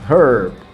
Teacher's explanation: in the american pronunciation you're gonna hear the r the rhodic sound herb while in british accents the r isn't